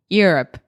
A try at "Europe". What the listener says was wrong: Yeah, it doesn't have to be like so fast and pushed together, but listen to me say it one time. Europe.